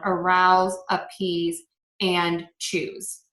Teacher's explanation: are all going to be pronounced with a z so again s e at the end of a verb we're going to pronounce that as a z sound